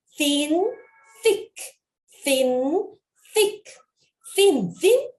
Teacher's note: TH는 바람 소리가 나는데 뒤에 모음이 와서 소리를 만들어 준 거예요. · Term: TH의 무성음